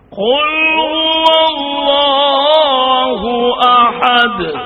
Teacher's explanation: اس میں اللہ کا لام ہے، اسے پر پڑھنا ہے، اس کو موٹا پڑھنا ہے